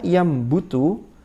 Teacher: Contohnya yambutu, yang asalnya yanbutu menjadi yambutu. Haitsu tahawwalat an-nun al-lithawiyya al-asnaniyya ila al-mim asy-syafataniyya litamatsuli makhrajil ba asy-syafatani. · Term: fil makhraj